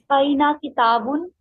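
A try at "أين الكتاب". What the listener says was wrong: नहीं, ये देखें लाम के ऊपर जज्म है और अल लगा हुआ है, ठीक है। तो जब इसको मिला के पढ़ेंगे तो कैसे पढ़ेंगे? जी अइनल किताब, और किताबुन इसलिए नहीं हो सकता क्योंकि अल लग गया, जब अल लग गया तो तनवीन नहीं आ सकती, तो ये गलती हमारे से आइंदा होनी नहीं चाहिए, क्योंकि अगर अल लगा हुआ है तो तनवीन नहीं आ सकती, आंखें बंद करके, ठीक है।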